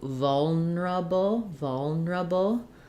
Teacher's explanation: first syllable stress on vol